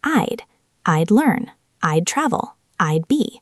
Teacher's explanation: It sounds like the word I plus a soft D.